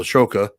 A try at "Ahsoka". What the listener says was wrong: It's Ahsoka, not Ashoka. Ahsoka. It is spelled the way you're saying it, but that's just not how it's said.